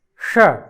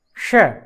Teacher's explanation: जिसका उच्चारण हम मूर्धा से करते हैं इसलिए इसको मूर्धन्य षकार कहते हैं, और श दांतों से उसका उच्चारण होता है।